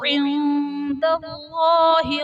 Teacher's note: نون ساکن کے بعد حرف دال آ رہا ہے تو یہاں پر اخفاء کا قاعدہ ہوگا، یعنی نون ساکن میں ہم غنہ کر کے پڑھیں گے